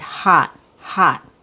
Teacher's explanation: short O, it's a relaxed vowel sound. You drop your jaw a lot. It's the letter O in the word hot, hot.